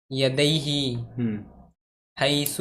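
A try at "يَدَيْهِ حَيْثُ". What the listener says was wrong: हाँ पे नहीं खींचना, यदैहि। सू पे भी खींच रहा, यह हैसु।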